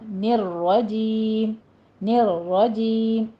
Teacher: را تشدید والی ہے اور مفخم پڑھی جائے گی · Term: را مفخم